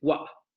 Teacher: Esta dental, o más bien alveolar oclusiva sorda, a finales de palabra, como por ejemplo en what, get, out e it, van a sufrir una glotalización. En lugar de decir what, van a decir what.